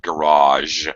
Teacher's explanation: so it has second syllable stress garage and it has the jaw sound like television garage so · most two syllable nouns have first first syllable stress but this is one of those weird words I think adopted from another language so it has second syllable stress